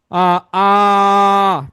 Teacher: এই আ কে আমরা চাইলে কিন্তু অনেক বড় করতে পারি